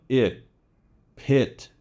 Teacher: So typical short I sound, it, pit. It can be shorter than most of the other short vowel sounds, but it still can't be too short. Try to work on lengthening it, pit.